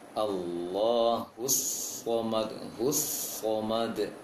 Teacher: Langsung masuk ketika tasydid, langsung Shad tebal.